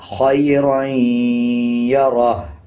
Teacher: اب جیسے یہ ہا کے اوپر الٹا پیش ہے تو اس کو 1 سیکنڈ کھینچ کے پڑھیں گے، خیرائیں یا رہو، وقف خیرائیں یا رہ۔ جب وقف کریں گے الٹا پیش کو سائلنٹ کر دیں گے اور ہا کی آواز کو آدھا پڑھیں گے، خیرائیں یا رہ۔